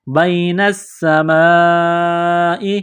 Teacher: یہ لمبی مد ہے، 4 الف کے لمٹ میں کھینچنا ہے